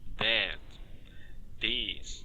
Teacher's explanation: percebeu que ao pronunciar essas palavras o th ele ouve vibração na garganta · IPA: [ð]